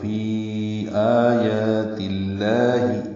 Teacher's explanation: تا مفتوحہ ہے، باریک پڑھیں گے، لام سے ملائیں گے زیر کی وجہ سے